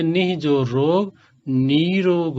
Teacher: विसर्ग लुप्त होता है और विसर्ग से पूर्व का जो स्वर वर्ण होता है वह दीर्घ हो जाता है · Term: दीर्घ इकार